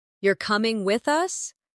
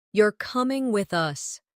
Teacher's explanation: The rise in your voice at the end of the question signals uncertainty, while the drop at the end of the statement signals certainty.